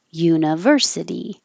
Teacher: u is secondary stress it'll get a little longer but not higher